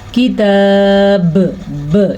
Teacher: وقف کی صورت میں با پہ ساکن آ جائے گا تو با پہ جھٹکا پیدا ہوگا. اس جھٹکے کو قلقلہ کہتے ہیں تجوید میں.